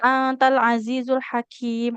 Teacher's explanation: huruf kaf jangan jadi tebal ya, tidak hakim.